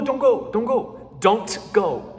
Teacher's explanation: I don't hear the T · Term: CTC sandwich